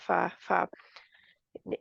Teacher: ऊपर के दांतों का सिरा और नीचे निचले होठ का गीला हिस्सा